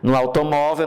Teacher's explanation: No automóvel, nós temos a segunda sílaba mais forte.